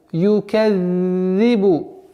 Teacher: Вот здесь звуком «за» межзубный